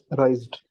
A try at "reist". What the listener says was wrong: reist again. Very good.